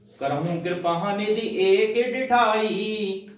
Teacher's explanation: ई का जो उच्चारण है वो खींचा गया है, इसका मतलब प्लोथ है। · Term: प्लोत